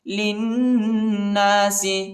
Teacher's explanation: لام کو نون کے ساتھ ملائیں گے اور غنہ کریں گے